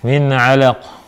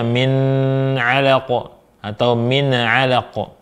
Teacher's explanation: Cara bacanya nun sukun dibaca jelas tanpa ditahan. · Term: idhar halki